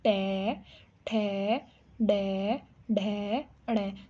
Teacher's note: हमारी जो मूर्धा है या जीभ है वो मुड़ती हुई नजर आएगी